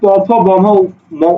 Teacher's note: বাতাসটা এসে তোমার ঠোঁটে বাধাপ্রাপ্ত হয়, কারণ তুমি মুখ বন্ধ রাখো